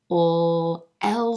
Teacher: the ul l sound at the beginning of words and syllables the tip of the tongue is pressed against that ridge and the sides of the tongue are down letting air escape out the side of the mouth